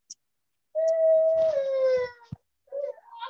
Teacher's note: And the T still makes a t- and then the sound resonates from your tongue like the glottal T is again towards the back t- and that one kind of it doesn't really like vibrate as much as the other sounds, but you can feel like the air stopping back.